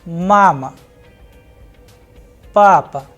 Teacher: in case of mom the sound of first vowel a is higher whereas the sound of second a is lower that is why the pronunciation is mama.